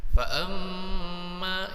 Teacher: Pakai tasydid ya. Kalau ma pakai tasydid itu digunakan berapa harakat? 3 harakat. Fa amma ya, itu digunakan selama 3 harakat, dipanjangkan. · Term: gunnah musyaddah